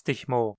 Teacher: O L em mo não é pronunciado pela maioria dos falantes, ou seja, ouve-se mo em vez de mol.